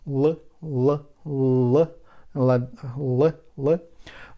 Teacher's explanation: We touch upper teeth and give air to the mouth, but it will go on the sides of the tongue, and we will have L, L, L, L, L.